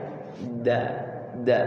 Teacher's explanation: Dal kecil itu tidak ada titiknya. Da. Tidak boleh ada anginnya.